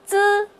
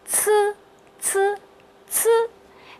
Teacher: 同样要把舌头放平，它是平舌音，用你的舌尖抵住你牙齿上下牙的中间。但是它和滋不同的呀，是它要送气